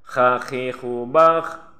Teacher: Ini bakh berhembus ya, karena kha ini termasuk huruf mahmus atau huruf amas.